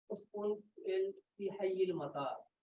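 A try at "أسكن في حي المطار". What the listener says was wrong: ये उसकुन नहीं है, अस्कुन है। क्या है? अस्कुन फी हय्यिल मतार।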